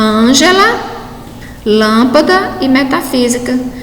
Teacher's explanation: então percebo que nós classificando-os como palavra proparoxítona tá aquela palavra a sílaba tônica recai na antepenultima sílaba é o que a gente percebe aí em metafísica